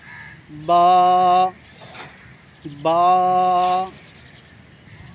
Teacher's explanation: جس حرف کے نیچے ایک نقطہ ہو اسے ہم با کہتے ہیں۔ با دونوں ہونٹوں کے تر حصے سے ادا ہوتا ہے